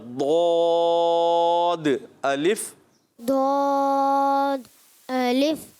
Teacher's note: زبان کا بغلی کنارہ لگائیں گے نا اوپر کی داڑھوں سے تو ادا ہوگا ضاد